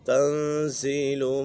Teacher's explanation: نون ساکن کے بعد زا حروف اخفاء میں سے آ گئی ہے تو یہاں پر اخفاء ہوگا، یعنی غنہ کر کے پڑھیں گے